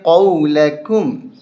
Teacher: قاف کو موٹا کریں گے، قَوْلَكُمْ، اس کاف کو باریک کریں گے